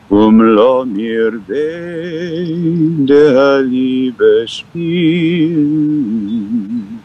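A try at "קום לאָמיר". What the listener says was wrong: Beautiful.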